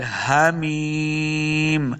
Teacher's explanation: ہا کو حلق کے نچلے والے حصے سے ادا کرنا ہے، تب ہا کا مخرج صحیح ادا ہوگا۔ ہا زیر یا ہی، تو یہ یا مد ہے، اس کو 2 حرکات لمع کرنا ہے، آخر میں جب ہم وقف کریں گے تو میم کو ساکن کر دینا ہے۔